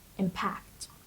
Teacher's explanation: Impact is a verb, and the stress is on the first syllable, impact. It means the effect or influence of one thing on another.